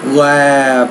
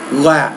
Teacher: The vowel before the voiced consonant will be longer than the vowel before the voiceless consonant.